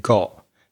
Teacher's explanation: when she said the word got she had what we call a glottal stop so that was not very pronounced it gets stuck or caught